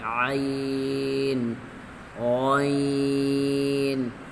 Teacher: حرف غین کو کھینچ لیں گے اور موٹا بھی کریں گے